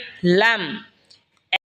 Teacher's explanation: লাম জিহ্বার আগার কিনারা সামনের ওপরের মারির দাঁতের সঙ্গে লাগা উচ্চারণ হবে লাম।